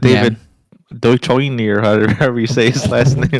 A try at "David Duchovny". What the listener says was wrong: David Duchovny, you mean? He said Dutch oven.